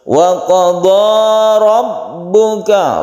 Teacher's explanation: Ra-nya disebut ra tafkhim atau tebal. Jadi membacanya itu ditebalkan atau tafkhim karena ra-nya ini berharokat fathah.